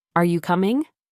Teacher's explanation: your voice usually goes up at the end.